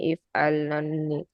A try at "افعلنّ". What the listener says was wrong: ইফালানে টান দিতে হবে তো, ইফালানে টান দিতে হবে, ইফালানি ইফালনানি, এভাবে টান দিয়ে পড়তে হবে।